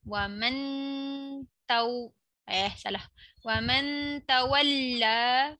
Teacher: Nun mati jumpa ta, dia dengung sikit lah macam masukkan bunyi ta tu. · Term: ihfaq